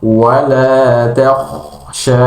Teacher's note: ta-nya tipis, Kha-nya tebal. Jadi peralihan antara tipis tebal itu sangat jelas ketika mengucapkan huruf takhsha, ditebalkan huruf kha.